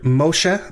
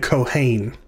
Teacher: us to the o class this is the vowel holum and it is long it makes the sound of the o in the english letter roll because it's a long o sound it's transliterated using the letter